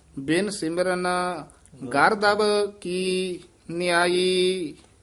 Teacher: ਇਹ ਗਰਦਬ ਦਬ ਭੱਬੇ ਦੀ ਆਵਾਜ਼ ਆਉਣੀ ਹੈ, ਗਰਦਬ ਬੱਬਾ ਨਹੀਂ ਬੋਲਣਾ, ਭੱਬਾ ਬੋਲਣਾ।